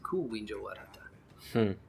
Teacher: If you say, do you speak Wenja, you say Ku Winja Wadhata. No, you don't go up in inflection. The way that you mark the question is with the ku